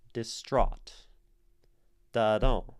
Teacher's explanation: the stress syllable is the second, and then the first is unstressed. Distraught.